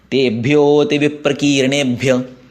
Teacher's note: भ्यो के आगे अ है लेकिन वो लुप्त है, इसलिए उसको लंबा करना है। तेभ्यो ते विप्रकीर्णेभ्य, अभी वी ह्रस्व है और की दीर्घ है।